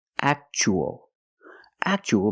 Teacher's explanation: T but Liberty the Statue of Liberty and the second word we see Tua as a second syllable so the t is pronounced CH